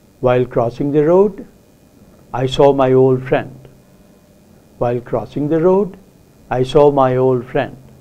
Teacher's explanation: utterance and you have to break it into different tone groups you often say the incomplete part of the sentence with a rising tone